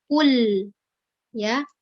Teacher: Ketika lam sukun itu jangan dikolkolah atau jangan dipantulkan huruf lam yang sukun ya. Bukan kule ya, tapi kul ya.